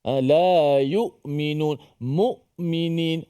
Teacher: Suara tertahan ni dia diputus suara seperti hamzah. Kan? La yu'minun, mu'minin, hamzah tu tertahan.